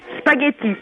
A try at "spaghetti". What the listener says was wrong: Moi j'entends yeux, j'entends pas gueux.